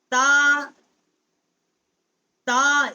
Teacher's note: زبان کا کنارہ جو ہے وہ ثنایا علیا کے دانتوں سے ٹکر کھاتا ہے